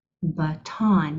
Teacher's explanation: You say the second syllable with more strength and emphasis than the first. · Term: accent